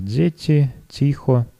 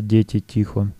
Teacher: Переход мягких «д» и «т» в свистящие «дз», «ц», например, «дзети», «тихо», вместо «дети», «тихо».